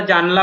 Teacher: জানালা উচ্চারণ সাধারণত জানালা উচ্চারণ করি না, না করে আমরা জানলা উচ্চারণ করে বসি খুব সংক্ষেপে। তাহলে এখানে দেখা গেল নয়ের আ হারিয়ে গেছে। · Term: স্বর লোপ